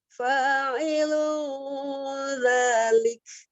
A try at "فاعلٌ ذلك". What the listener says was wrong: Oh, agak tebal ya. Waktu pas dengungnya jangan ditebalkan. Fa'ilun. Jadi jangan ditebalkan. Fa'ilun dzalik. Tadi tebal soalnya dengungnya.